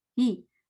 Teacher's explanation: हे नहीं है, ही है, या की साउंड आएगी